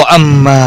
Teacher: वो अम्मा मीम मुशद्दद पर गुन्ना होगा